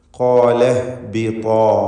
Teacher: ഖാഫിനും അലിഫിനും തഫ്ഖീമാണ്, തടിപ്പിച്ച് സ്വരഭാരത്തോടെ ഉച്ചരിക്കുക